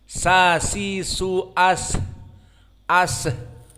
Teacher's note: Sifatul hams adalah jarayan an-nafs. Di saat disukunkan masih ada nafas yang keluar.